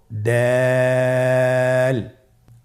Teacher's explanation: দাল হরফটি বারিক হরফ। এই হরফটি উচ্চারণ করার সময় আমরা অবশ্যই 3 আলিফ টেনে পড়ব।